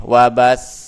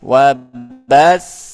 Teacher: Nah, tidak kalau biasa kan seperti ini wabas. Nah, tapi untuk menekankan di sini ada tasydidnya maka kita angkat suaranya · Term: nabr